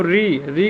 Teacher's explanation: जैसे हम री कहते हैं तो हमारा जीवा जो है अग्रभाग ऊपर जाकर टच करता है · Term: मूर्धा